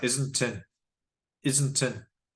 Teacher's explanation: The t and the in links together.